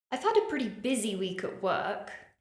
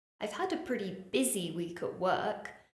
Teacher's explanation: I stressed the word busy